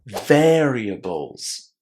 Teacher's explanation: we put the stress on the first syllable, and we don't pronounce the able inside as able. It's ables, variables.